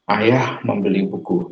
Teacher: Di nomor 1 kita akan tekan pada kata ayah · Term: tekanan